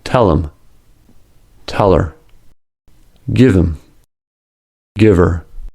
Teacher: Once the H is dropped, we need to connect the remaining vowel with the consonant sound that comes before it. By connecting them, the two words sound like one word.